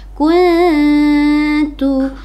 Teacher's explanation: nun mati bertemu dengan huruf ta ikhfa Hakiki jadi harus samar ke huruf ta